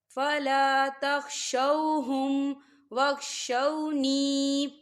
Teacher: یا ساکن ہے اور یا ساکن سے پہلے زیر ہے، تو یہاں پر یا مدہ ہو رہا ہے، ہم اسے 2 حرکت کی برابر کھینچیں گے